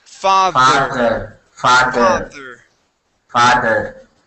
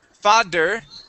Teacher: when i say father my tongue goes between my teeth like this